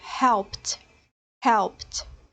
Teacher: o P é uma consoante que não produz vibração na sua corda vocal, então no passado a gente vai dizer helped, helped. · se o verbo regular na sua forma infinitiva terminar em um voiceless sound, um som sem vibração na corda vocal, o ed final será pronunciado com um som de T. Para fazer o teste, se o verbo vai ser falado com o som final de T, coloque a mão na garganta e pronuncie o verbo para ver se haverá vibração na corda vocal.